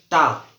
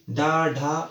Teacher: जैसे हम बोले टा, टा में आप करके देखोगे जीभ अंदर की ओर टकरा रही है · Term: मूर्धा